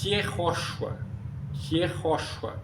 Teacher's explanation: O caso é I, porque a pronúncia não é como Y, a pronúncia própria. É um I bem fraquinho, soproso, consonantal.